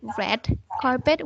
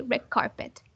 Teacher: the d sound changes to a hard g before a hard g or a hard k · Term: regressive assimilation